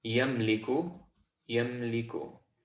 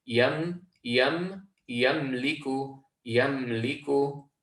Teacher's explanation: So there should be no echoing on this letter meme, and it should be completely connected to the ya before. So if it were to be recited incorrectly, you'd hear an echo, and you'd hear the sound yamaliku, yamaliku, yamaliku.